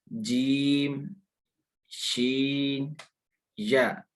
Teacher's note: ज़ुबान का दरमियान वाला हिस्सा जब ऊपर के तालु से मिलेगा तब ये लफ्ज़ अदा होंगे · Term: हरूफ़ शजरिया